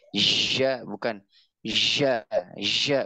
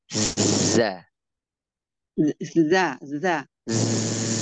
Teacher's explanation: Lidahnya lurus ke gigi seri bawah